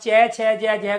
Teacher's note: आपकी जीभ ऊपर नीचे, ऊपर नीचे स्पर्श कर रही है आपके तालव्य स्थान को। इसी वजह से ये तालु से उच्चारण होते हैं।